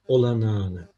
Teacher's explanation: Bir önceki sesli harfi bir ses uzattık